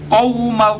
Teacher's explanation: گلے کے نرم حصے سے قوف کو نکالا جائے گا. قوم بعض حضرات واو کو ادا تو کرتے ہیں لیکن واو کے اوپر ہونٹ کو گول نہیں کرتے.